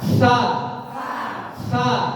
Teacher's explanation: Kalau pengucapan sa, pangkal lidahnya itu turun Pak. Sa, coba turun, sehingga suaranya turun atau tipis.